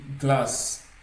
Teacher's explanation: le z va s'assourdir en s